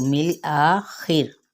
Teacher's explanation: میم کی زیر کا لام کے ساتھ ملائیں گے تو مل آخر. خا پر پڑا جائے گا اور را ساتھ ہی باریک ہوگا زیر کی وجہ سے، ما قبل زیر کی وجہ.